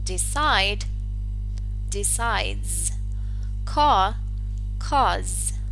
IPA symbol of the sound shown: z